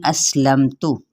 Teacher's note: سین پہ سیٹی واضح کریں، میم پہ اظہار کریں اور تا کی پیش کو لمبا نہیں کریں